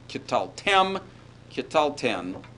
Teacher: the first syllable is now purely and simply propretonic, and you will see a reduction to schwa there.